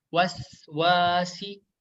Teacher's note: huruf sin yang berharokat sukun harus dialirin ya. Harus dialirin karena memiliki sifat rokhawah ya.